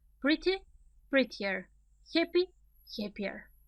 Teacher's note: pay attention to the stress. It's always on the first syllable.